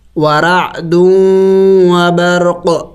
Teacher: وقف میں ہم نے اس قاف کو سائلنٹ کرنا ہوگا، ساکن کرنا ہوگا